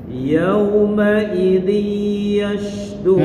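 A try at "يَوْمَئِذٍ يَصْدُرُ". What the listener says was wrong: Nah, enggak yas. shad yas.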